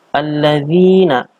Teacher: Ini adalah bacaan mad tabi'i atau mad asli. Panjang bacaannya adalah 2 harokat. Dikatakan mad tabi'i ini karena ada huruf dzal yang berharokat kasroh bertemu dengan mad tabi'i yaitu ya.